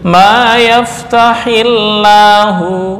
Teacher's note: Maka lafal lafzul jalalah lamnya dibaca dengan tarkik.